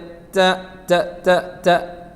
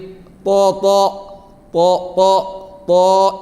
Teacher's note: നാവിൻ്റെ തല തട്ടുന്നത് 3 അക്ഷരങ്ങൾ പറയുമ്പോഴും നാവിൻ്റെ തല തട്ടുന്നത് ഒരേ സ്ഥലത്താണ്, അതായത് പല്ലിൻ്റെ മുരടിലാണ്.